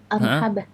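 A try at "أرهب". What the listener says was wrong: Bukan hak. Bukan hak. Arhaba bukan. Arhaba. Ha lebih dalam. Arhaba.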